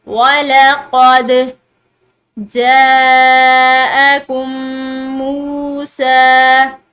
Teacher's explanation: دال جو ہے یہ حروف قلقلہ میں سے ہے، ٹھیک ہے، تو اس کو ہلا کر پڑھیں گے